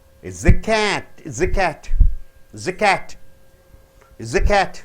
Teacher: Cat should be stressed more.